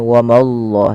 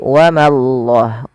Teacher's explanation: ma tipis, Allahnya tebal.